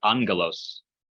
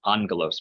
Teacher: It's a gamma followed by a gamma. So the first gamma sounds like an N sound.